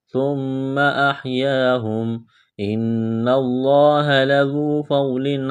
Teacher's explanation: نون مشدد ہے، غنہ کریں گے، آواز ناک میں چھپائیں گے